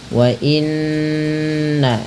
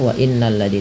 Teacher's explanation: Ini ada bacaan gunnah, cara membacanya menahan bunyi suara n-nya atau bunyi suara nun-nya sepanjang 2 harokat. Wa inna baru dilepas ya.